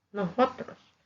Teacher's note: Hay personas que acostumbran aspirar el sonido de la S y eso hace que suene como J